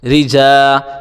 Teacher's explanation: را زیر ری، جیم الف زبر جا، رجا۔ را کو باریک پڑھیں گے، را کے نیچے جب بھی زیر آئے گا تو را باریک پڑھا جائے گا